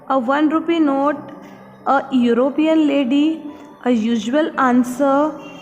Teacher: These words begin with a W or Y sound when pronounced, thus taking on the qualities of a consonant.